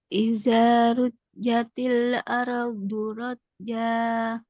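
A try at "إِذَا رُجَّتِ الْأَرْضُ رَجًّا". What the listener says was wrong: Oke, rohnya ditebelin. rohnya yang di sini ditebalin. Di rujjatil ardu. Ardu, jangan ardu. Ardu. Iza rujjatil ardu rajja.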